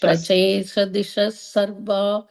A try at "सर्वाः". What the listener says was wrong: sarvaha yeah that is sarvaha dishas sarvaha yeah because you're pausing if you're putting a comma there then you have to say sarvaha so